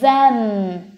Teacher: lại gặp tiếp cái âm th, nhưng mà nó là âm hữu thanh này. Mình sẽ đọc là z, a, them.